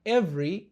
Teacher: tunabananisha V na R na tunaificha herufi E. Hivyo inatamkwa every na sio every. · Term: kubananisha herufi